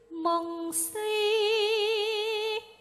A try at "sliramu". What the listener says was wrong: Sli, sliramu ora si. Nah, kowe mau muni mong sliramu. Sli. Dadi nganggo dileti, sli. Ora si, sli.